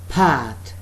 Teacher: In the word pat, there was some sort of puff affair, plosiveness, plosive. Pat, both lips are together and there is a puff of air when we are speaking the word pat